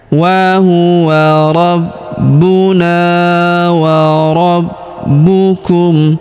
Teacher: huruf na kita panjangkan dua harakat karena terdapat alif di depannya